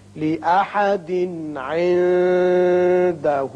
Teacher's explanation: یہاں تنوین کے بعد عین ہے جو حروف حلقی میں سے ہے، اظہار حلقی ہوگا